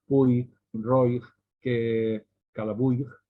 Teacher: es el diptongo Puig, Roig, que Calabuig, que nosotros hacemos CH final